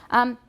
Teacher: Tenth, my N is interdental.